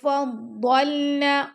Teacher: ضاد کو ہم نے موٹا پڑھنا ہے اور لام کو ہم نے نرمی سے پڑھنا ہے